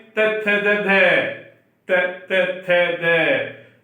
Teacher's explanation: जीभ कहां पे स्पर्श कर रही है, दांतों पे स्पर्श कर रही है, तो दंत पड़ जाएगा नाम।